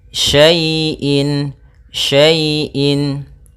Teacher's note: ini kita namakan dengan bacaan lin, yang mana ya dalam membacanya lembut